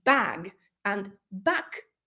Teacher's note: the a in back is going to be a bit shorter than the a in bag